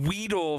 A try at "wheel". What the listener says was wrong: no. There's no D in there. It's just wheel.